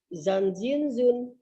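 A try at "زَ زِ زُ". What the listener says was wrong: Zan, bukan jan. Zan, zin, zun.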